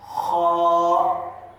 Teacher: خا حلق کے اوپری حصے سے